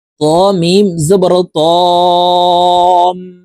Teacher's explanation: গুন্নাটি নাকের বাঁশি থেকে পড়তে হবে